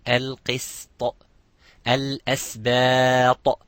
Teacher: So not to make the sin mufakham as a heavy letter.